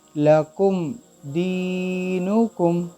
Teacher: اب یہاں next letter ہے دال، سو قاعدے کے مطابق میم اور با کے علاوہ کوئی حرف آ گیا تو اس میم کو ہم غنہ نہیں کریں گے، ظاہر کر کے جلدی سے ادا کریں گے۔ دال یا زیر دی، نون پیش نو، دینو، کاف میم پیش کم، دینکم، لکم دینکم۔